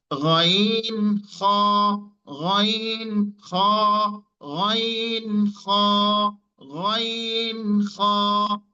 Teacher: কন্ঠের শেষ ভাগ থেকে উচ্চারণ হয় গাইন খাইন